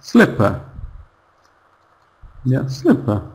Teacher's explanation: For example, sl the second syllable is just p-p very quiet one. Sle is loud. It's big. It's strong. But p it's weak.